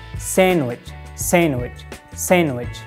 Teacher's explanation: wrong in sandwich we just dropped the d d as silent we don't pronounce d